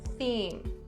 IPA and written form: θiːm (theme)